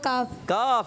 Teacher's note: زبان کی جڑ اور تالو کے سخت حصے سے ادا ہوگا کاف